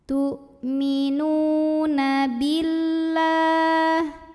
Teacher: Nu matobi'i zahiri karena ada waw sukun yang didahului baris dhammah, maka nunnya panjangkan 2 harokat